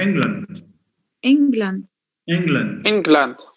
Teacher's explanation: The weak form of land, when it's used in a compound, a combination of two words, it becomes a schwa, not an a sound.